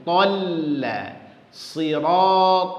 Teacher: Ta-nya bulat, lamnya langsung tarik senyum.